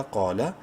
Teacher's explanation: منہ بھر کے پڑھتے ہوئے قوف کو ایک الف کے برابر لمبا کریں گے